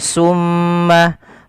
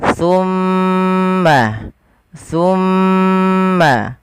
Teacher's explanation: makhrajnya ujung lidah ujung lidah kita menempel dengan gigi seri atas kita